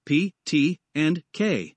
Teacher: plosive consonant a plosive consonant is a consonant sound that is produced by briefly stopping the airflow in the mouth and then releasing it suddenly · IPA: [p], [t], [k]